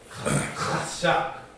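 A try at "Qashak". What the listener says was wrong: Kashak. The K is a Q.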